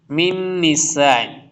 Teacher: نون ساکن کے بعد نون آ رہا ہے، ادغام ہوگا، غنہ بھی ہوگا